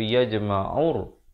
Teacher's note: Jadi alif lam qaf syamsiah di sini, lamnya tidak dibunyikan. Jangan baca yajma'ul tetapi yajma'ur. Terus masuk ke dalam ra.